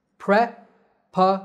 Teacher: Notice that the S is pronounced as a Z sound. The stress is on the third syllable Z.